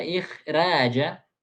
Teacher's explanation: dibaca r-nya ee tebal karena sebelum ra itu ada huruf mati sebelumnya